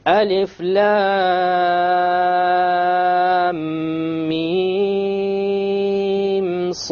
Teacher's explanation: So there's a ghunna between the lam and the mim, and there's no ghunna between the mim and the sad.